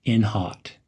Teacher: Link in and hot as almost one word